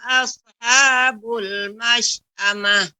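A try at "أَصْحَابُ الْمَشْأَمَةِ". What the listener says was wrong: Ya, Ibu tidak boleh asah. Tidak boleh asaha. Tetapi asha.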